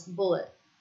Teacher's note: the dropping of the word final consonants